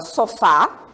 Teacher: o fá é a sílaba forte dessa palavra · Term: sílaba tônica